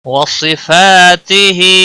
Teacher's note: صاد حروف مستعلیہ میں سے ہے، پور پڑھا جائے گا۔ ہا الف مدہ ہے، ایک الف کے برابر کھینچ کر پڑھیں گے۔